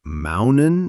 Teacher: Yes, that's a glottal stop. Instead of using the tip of the tongue, we stop the air in the throat. It's like the T gets stuck halfway.